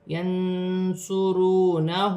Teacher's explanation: نون ساکن کے بعد حرف اخفا میں سے صاد آ رہا ہے، نون ساکن میں اخفا ہوگا، ینصرونہ۔ واو ساکن سے پہلے پیش ہے، واو مدہ بن رہی ہے، ایک الف کی مقدار کھینچ کر پڑھا جائے گا۔ ہاں پر الٹی پیش ہے، اسے بھی ایک الف کی مقدار کھینچ کر پڑھا جائے گا۔